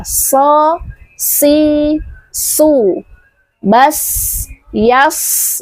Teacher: Selain mengubah merubah makna juga akan indah kedengarannya jika huruf itu ee kita ee mengucapkannya sesuai dengan makhraj dan sifatnya. Sayasla shad di situ adalah huruf yang tebal memiliki sifat istial. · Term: huruf tebal